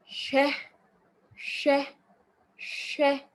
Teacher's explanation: So there's a combination of the sh sound and the v sound or u sound. So it's like you're combining a sh and a w sound together to get a sh, sh.